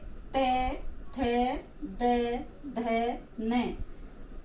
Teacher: इनकी ये जो 5 वर्ण है ये जो ध्वनि निकलती है तो हमारी जीभ दांतों को स्पर्श करती है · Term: त वर्ग